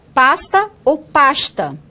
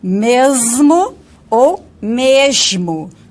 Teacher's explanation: o arquifonema fricativo, ele neutraliza o contraste do ponto da fricativa em coda, cuja produção é sensível ao vozeamento da consoante seguinte.